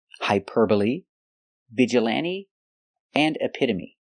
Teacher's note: they end with e but the E is not silent we pronounce them all the same with a long e like green beans